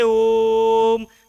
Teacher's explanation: ऐसे स्वर का जब उच्चारण करेंगे जैसे ओम, तो लंबा चलता चला जाएगा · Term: प्लुत स्वर